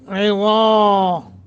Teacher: ضا کر کے پڑھنا ہے اور کھڑی زبر ہے لمبا کرنا ہے